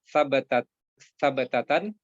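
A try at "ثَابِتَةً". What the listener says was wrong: Sa-nya panjang.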